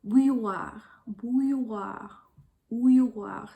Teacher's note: And I think this word is especially hard to pronounce because it's got that special oo sound, some diphthongs in there like oui, oui, and the y sound as well as an R.